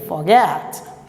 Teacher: Na realidade, aqui, nós temos o OR, ok? Então, o OR que vai se transformar em schwa.